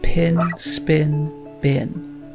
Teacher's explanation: You'll notice that P in spin is actually nearly identical to the B in bin.